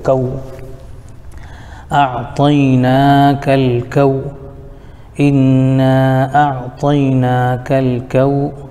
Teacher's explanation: واو ساکن سے پہلے زبر ہونے کی وجہ سے واو لین ہو جائے گا، اس کو جلد پڑھیں گے